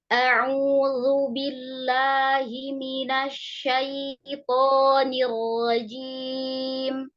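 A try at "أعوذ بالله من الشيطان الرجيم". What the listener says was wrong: Zalnya tipiskan, Bun, coba. Ya, toknya udah keluar belum kira-kira? Iya, jangan terlalu dalam. Dia kurang keluar. Terlalu di dalam. Pokoknya udah tebal, cuma terlalu di dalam. Dikerin. Dibuka aja.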